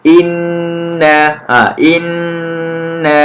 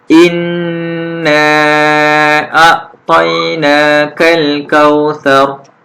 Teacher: nun syaddah kita perlu idghamkan, dengungkan dengan kadar bacaan dua harakat. Okey, tak boleh satu harakat, perlu dua harakat.